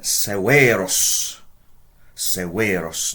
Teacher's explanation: notice a long e in the second syllable